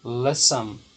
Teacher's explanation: No caso, listen, a mais forte é a primeira e não essa do final. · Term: sílaba tônica